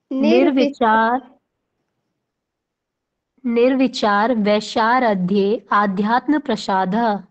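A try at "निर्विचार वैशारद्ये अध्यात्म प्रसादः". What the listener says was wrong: आध्यात्म नहीं पढ़ना है, आ का उच्चारण थोड़ा सा लुप्त करना है, क्योंकि आ वहां पे पूर्ण रूप से नहीं है, अविद्यमान है। तो ठीक है, निर्विचार वैशारध्यात्म प्रसादः।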